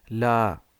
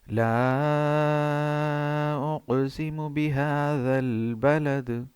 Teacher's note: لا ہے اس پہ بڑی مد ہے، مد متصل، تو اس کو ہم چار الف کے برابر ادا کریں گے